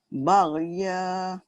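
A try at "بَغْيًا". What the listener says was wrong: Tebal. Dia ada beza. Dia ada beza tu. Kalau baghya dia nipis. Ya dia tebal dan tinggi. Sebab dia ada isti'la.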